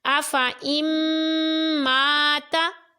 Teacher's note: الف سے پہلے جو زبر ہے اس کو ہم بغیر کھینچے پڑھ رہے ہیں جس الف کے اوپر گول دائرہ ہے